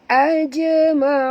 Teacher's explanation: jim mati di tengah-tengah kalimah, kena qalqalahkan dia ya